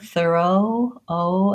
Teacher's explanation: In the American accent, the O is a diphthong and it slides between two vowels. So I have a round O with my mouth slightly more open, and then I relax and becomes less of a becomes a lax vowel instead of a tense vowel, O.